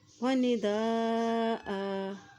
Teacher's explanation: یہاں دیکھیے اس حمزہ کے پر بھی مد ہے تو اس کو لمبا ادا کریں گے۔ یہاں وقف کرنے کی صورت میں جو ہے دو زبر ایک زبر میں بدل جائے گا، ایک حرکت اس سے پڑھیں گے۔